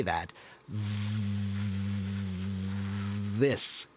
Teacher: when you say that this you'll feel a a buzzing you'll feel a humming that's the voiced th sound